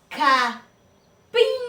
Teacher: Capim, a última sílaba é a mais forte. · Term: sílaba tônica